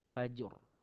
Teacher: Pertama, fajr ada qalqalah. Kedua, kena timbulkan bunyi ra yang mana ra tu tebal.